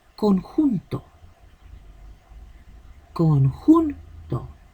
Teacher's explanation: Con y to serían las sílabas átonas.